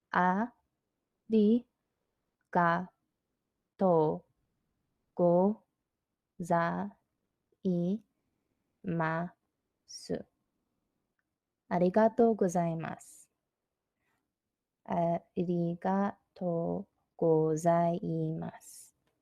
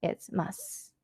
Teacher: When it's at the end of the sentence, you don't fully pronounce su. It's mas, like it's like an S sound.